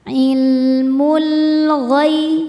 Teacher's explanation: Sebab alif lam menghadapi huruf qamariah yaitu ghain. Cara membaca lam sukunnya ini adalah dibaca dengan jelas atau izhar izhar qamari. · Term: alif lam qamariyah